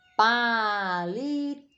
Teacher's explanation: É oxítona, forte está na última, terminou em O.